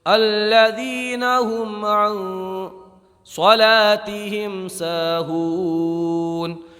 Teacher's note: یہاں پر میم میں اظہار شفوی ہوگا